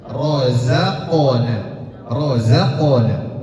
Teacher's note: ini dipantulkan karena qof adalah salah satu huruf qalqalah yang harus dipantulkan